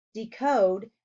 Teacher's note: Decode has the long O sound in the second syllable.